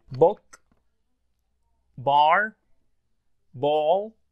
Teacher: Right, so there's no air out of your mouth.